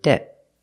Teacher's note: usually we don't release the T at the end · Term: stop te